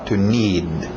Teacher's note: Engole aquele D no final